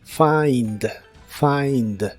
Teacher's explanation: se pronuncia como si tuviera una a entre la F y la I find find lo puedes usar en ideas como I can't find